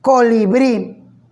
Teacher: tiene tres sílabas ccoo y brit y me doy cuenta que la sílaba tónica aparece al final en la última sílaba entonces era una palabra aguda las palabras agudas son aquellas cuya